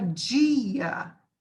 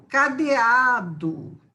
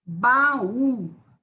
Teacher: são vogais separadas em sílabas distintas sílabas separadas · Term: hiato